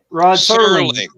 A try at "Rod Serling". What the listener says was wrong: Serling. Serling without the T.